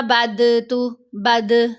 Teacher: ضاد کے اوپر ہم نے قلقلہ نہیں کرنا، یہ غلط آواز بنے گی